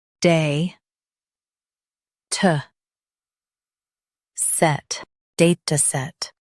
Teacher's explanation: Stress day and keep t light.